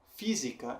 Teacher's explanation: Física, em que fi é a sílaba forte.